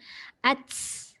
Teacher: Masa tu hujung lidah dia kalau kita perasan dia dah tak parking hujung lidah belakang gigi atas dah. Dia letak hujung lidah dekat bawah. Maka angin tu terlepas banyak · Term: hamasin